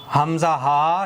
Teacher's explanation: हमजा हा शुरू हलक सीने की तरफ से अदा होते हैं। इन दोनों हर्फफ़ों का एक ही मखरज है।